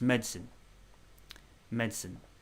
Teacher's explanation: you're sort of skipping the vowels